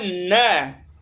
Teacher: नासिका से भी बोला जाता है और दंत से भी बोला जाता है।